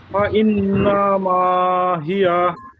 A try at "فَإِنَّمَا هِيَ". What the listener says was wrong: হ্যাঁ মাশাআল্লাহ, আপনার উচ্চারণই ঠিক আছে, তবে দুইটা হরকটে একটু টান হয়ে গেল। বা ইন নামা, এই যে নামা টান হইলো, নামা হবে, নামা টান, না টান নেই। বা ইন নামা, নামা,